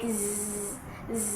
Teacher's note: So if you notice when you are producing the letter Z sounds, there is a vibration, right? So meaning it is voice sounds because it has vibration.